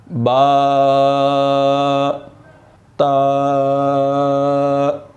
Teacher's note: زبان کی نوک اوپر والے دانتوں کی جڑ سے لگے گی تو تا ادا ہوگا۔